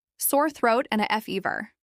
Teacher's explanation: presents the challenge of the th sound in throat. Place your tongue between your teeth.